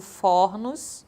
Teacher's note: A palavra forno, timbre fechado, que quando nós fazemos o plural ocorre uma metafonia, ficando fornos.